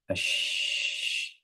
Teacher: Kemudian ada sifat tafasyi. Tafasyi menyebarnya angin di dalam mulut ketika mengucapkan huruf shin. Nah, jadi ketika kita khususnya ketika dalam keadaan sukun, shin itu akan tersebar suaranya di dalam mulut.